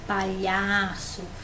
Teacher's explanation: Palhaço, o mais forte é o lhá